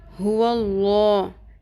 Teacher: हुल्ला इसमें लाम पुर हो जाएगा